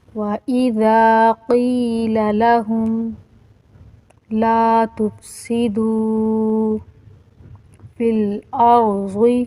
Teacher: قاف موٹا حروف ہے اور اسی طرح را اور ضاد بھی موٹا حروف ہے، اور اس کے بعد جو لام الف ہے یہ وقف کی علامت ہے، لیکن اس کا معنی ہے نہیں، تو اس کا مطلب ہے یہاں پہ وقف بھی نہیں کیا جائے گا۔